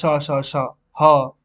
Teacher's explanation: आपकी जो हवा है उसमें उसको बाहर निकालने के लिए संघर्ष करना पड़ रहा है हवा गर्म निकल रही है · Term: संघर्षी व्यंजन